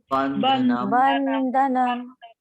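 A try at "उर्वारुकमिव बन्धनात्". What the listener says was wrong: So Urvaruk miv bandhanat. You need to put T in the last. This Vandhanat T in the end. Take this end from end, then put a T.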